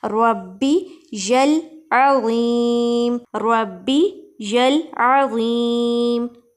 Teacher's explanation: ربی میں را کو موٹا پڑھیں گے کیونکہ را کے اوپر زبر ہے. جب بھی را کے اوپر زبر ہوتی ہے یا پیش ہوتی ہے تو را کو موٹا پڑھتے ہیں.